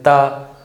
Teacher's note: इसमें ये देखते हैं ना कि दांत बिना टच करे नहीं बोल सकते, ऐसे ता, जीभ को दांत से ना टच करिए, बोल के देखिए नहीं बोल पाएंगे। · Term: ता वर्ग